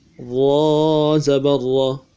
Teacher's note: را کو موٹا اور پر پڑھنا ہے، موٹا پڑھنے کے لیے زبان کا بیچ اٹھائیں گے۔ جب بھی را کے اوپر زبر آ جائے تو ہمیشہ پر پڑھیں گے۔